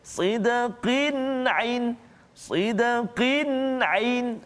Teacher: tanwin bertemu dengan huruf ain. Maka kita tak boleh baca dengung kat situ. Sidqin ain, salah. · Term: izhar halqi